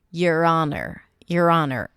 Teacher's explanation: even though it's spelled with an H, we pronounce it without an H.